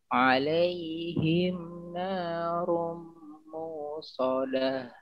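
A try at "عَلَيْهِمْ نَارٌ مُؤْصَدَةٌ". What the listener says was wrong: Nah, pendekin. Di situ ada Hamzah. Jadi dilihat di sana bukan waw yang sukun. Yang sukun itu hamzahnya.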